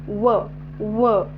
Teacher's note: या वर्णाचा उच्चार करत असतानी दात आणि ओठ या दोन अवयवांचा उपयोग होतो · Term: दंतोष्ठ